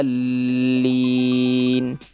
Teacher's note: Dol 6 ketukan. Ya, kemudian lam ada tasydid maka ditekan